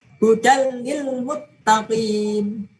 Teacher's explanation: tanwinnya dimasukkan kedalam lam tapi tidak ada dengungnya